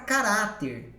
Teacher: Caráter é paroxítona, a penúltima sílaba é forte. Mas o acento só é colocado em virtude da terminação.